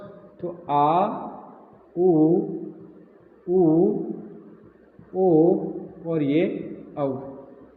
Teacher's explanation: पश्च स्वर जो जिह्वा के पश्च भाग से उच्चारित होंगे